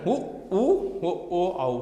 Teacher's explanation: உதடுகள் குவிந்து ஒலிப்பதால் உருவாகிறது